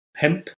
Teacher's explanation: we had the assimilation of N and P turns to mp, right? So hemp, because of the bilabial context.